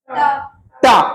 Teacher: जीभ कहां जा रही है ऊपर कठोर वाले भाग पे जा रही है ना? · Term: मूर्धन्य